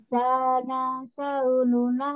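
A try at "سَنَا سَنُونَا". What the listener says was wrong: Jangan dipanjangin Bu, ininya jangan dipanjangin. Sana sau.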